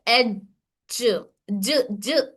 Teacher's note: जब हम जीम पढ़ते वक्त हमारे जुबान का दरमियानी हिस्सा ऊपर तालू के दरमियानी हिस्से से टच करके होल्ड कर देना। होल्ड करने से आवाज यहीं पर रुकी रहती है। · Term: सिफत जहर